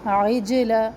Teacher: جیم کو ہلانا ہے کیونکہ جیم حروف قلقلہ میں سے ہے